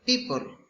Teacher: example people. It's bilabial plosive.